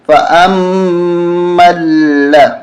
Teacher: نہیں پڑھیں گے، لام کو میم کے ساتھ ملائیں گے، اور میم مشدد ہونے کی وجہ سے یہاں غنہ ہوگا